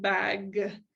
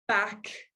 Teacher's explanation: g and k are produced in exactly the same spot the only difference is whether or not we're pushing air through our vocal folds